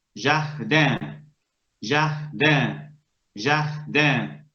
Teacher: Esa I abre un grado, se transforma en una especie de E. Y por influencias de la N, un, jardin. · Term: E nasalizada